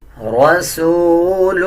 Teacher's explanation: را کے اوپر زبر ہے، را کو پر یعنی موٹا پڑھا جائے گا